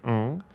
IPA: ŋ